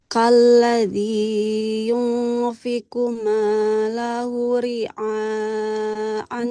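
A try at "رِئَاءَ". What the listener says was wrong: Jangan ria. Ria hamzah ya, bukan ain. Jangan ria. Ria.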